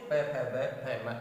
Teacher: बिना होठों को मिलाए बिना इन्हें नहीं बोल सकते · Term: ओष्ठे